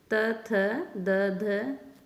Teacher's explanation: दंत, दांतों से, उच्चारण स्थान है इनका दांत, कि दांतों के बीच में से ये वर्ण निकलते हैं।